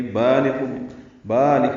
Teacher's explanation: بالغ مدہ ہے، دو حرکات لمبا ہے